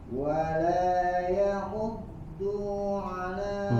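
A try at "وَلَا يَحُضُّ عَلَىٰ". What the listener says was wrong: Du-nya pendek Pak. Du-nya pendek. Wala yahuddu ala.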